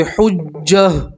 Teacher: وقف کریں گے تو گول تا کو ہا سے بدلیں گے اور ہا کے اوپر جزم پڑھیں گے